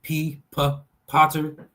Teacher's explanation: So the P is a plosive, non-vibrating labial lip sound.